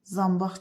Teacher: A qalın açıq dodaqlanmayan saitdir. · Sözdə tələffüzə fikir verəndə nə N var, nə də Q var.